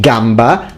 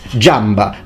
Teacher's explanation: every word that we pronounced in modern Italian with a g sound, like gamba, leg, is now pronounced jamba, because they change g into j